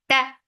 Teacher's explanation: For fatha, the sound is short. Ta, very sharp sound, no flow of sound or breath.